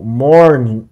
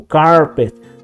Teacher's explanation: o R pronunciado no inglês, vemos o R em meios de palavra, ele tem esse som do R retroflexo